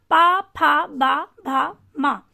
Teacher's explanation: ओष्ठ ध्वनियां पा, फा, बा, भा, मा। जब आप पा, फा, बा, भा, मा बोलते हैं तब सर्वाधिक रूप से सक्रिय जो होते हैं हमारे होठ होते हैं